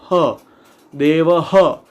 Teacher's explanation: હકાર જેવો અવાજ અંદરથી ને એક હવા બહાર નીકળશે. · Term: વિસર્ગ